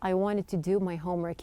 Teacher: wanted was changed within the pronunciation, and sometimes even the T that we have here, wanted, disappears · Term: dropping this true T